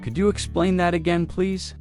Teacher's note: Could you sounds like could ya, naturally?